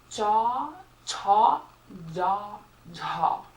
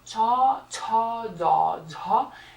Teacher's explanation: You take the body of your tongue and they're produced between the palate, the roof, which is another word for the roof of your mouth, and the body of the tongue, not the tip of the tongue, like we know from the retroflex sounds, but the body of the tongue. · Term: palatal consonants